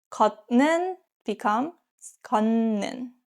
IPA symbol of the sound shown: 건는